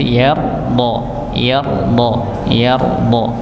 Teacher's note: huruf dha yaitu tepi lidah bertemu dengan geraham bagian atas, maka dibaca ya tebal nggih, yar, ya nanti yarda, yarda, yarda.